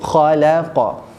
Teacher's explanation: kha tebal kha tapi la tu nipis